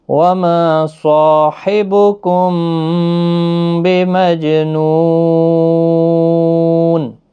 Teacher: میم ساکن کے بعد با ہے، اخفا شفوی ہوگا، غنہ کے ساتھ پڑھیں گے · صاد حروف مستعلیہ کا حرف ہے، پور بھی پڑھنا ہے۔ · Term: قلقلہ